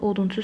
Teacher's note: odunçu sözündə yalnız dodaqlanan saitlər var